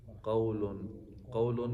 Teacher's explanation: قاف کو موٹا پڑھنا ہے حروف مستعلیہ ہے. واو سے پہلے زبر ہے تو واو لین.